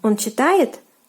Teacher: you just have to raise your intonation when saying the question